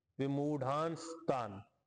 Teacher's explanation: न शेवटी होता पण न ला अनुस्वार झाला, स जुडला आणि तान परत पुढं आहे, त पुढं असताना स जोडला, विमूढांस्तान.